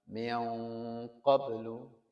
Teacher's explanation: Ma'an sajjaja ya, ma'an sajjaja jangan ma'an. Nanti kalau bertemu huruf yang tebal seperti ketemu qaf ya, ya ada rasa tebalnya qaf, jadi dengungnya itu menebal. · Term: ikhfa